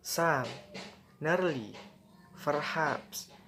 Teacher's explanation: Fall rise, often suggesting uncertainty or hesitation.